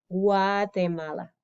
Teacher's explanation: The G sort of, depending on where you are, some people make a G sound. Other accents, it's more of a W, Guatemala. So in English, we say Guatemala.